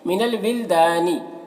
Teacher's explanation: दा में अलिफ मद्दा है, एक अलिफ के बराबर खींचेंगे